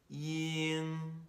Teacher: Next we have the back nasal sounds. Remember, you're closing off the air passageway by moving your tongue back. The very back of your tongue is closing it off near your throat.